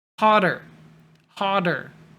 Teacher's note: But when we add ER, it becomes a flap T, where your tongue hits the top, makes a sound, and then you get the word hotter, hotter.